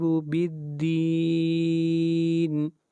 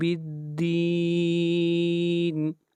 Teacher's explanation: بالدین کے اوپر مد عارض ہو رہی ہے، اس مد کو 3 الف کے برابر کھینچ کر پڑھیں گے